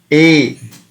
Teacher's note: So uh, because there is effort from throat as well as from the palate. A, A, A is a dvimatrasmak sound. So we have to pronounce it for the period of two matra.